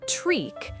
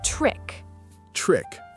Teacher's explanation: Short I sound, trick. Not treek, trick. Trick. Short and sharp.